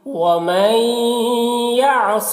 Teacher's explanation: یہاں پر ادغام ناقص ہوگا، غنہ کے ساتھ میں پڑھنا ہے